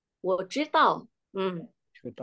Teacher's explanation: Ingat huruf D bunyinya T, bukan TH.